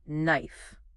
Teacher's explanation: that k at the beginning totally silent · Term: silent letters